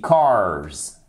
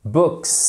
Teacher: Oui, c'est un Z ici, cars. Books, c'est un se.